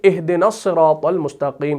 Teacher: लेकिन जब मिलाएंगे तो हम पढ़ेंगे इदना सिरात मुस्तकीम। तो इदना का जो अलिफ है उसको हम गिरा देते हैं। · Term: अलिफ को गिरा देते